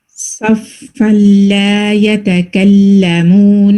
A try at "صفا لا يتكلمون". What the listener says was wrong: الحمدللہ، لیکن یہاں پہ سین کی جیسے ساؤنڈ جاتی تھی نا، صف صف صف لا يتكلمون. سواد کو آپ نے مارک کر لیجیے گا انشاءاللہ.